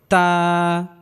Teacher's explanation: তা উচ্চারণের ক্ষেত্রে হালকা বাতাস বের হবে